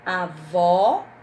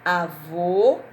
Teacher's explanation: som é fechado avô diferente de avó e olha o tom avó o som é aberto avô o som é mais fechado